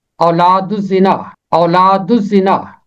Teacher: الف لام کے بعد زے حرف شمسی ہے، اس لیے لام کی آواز خاموش ہے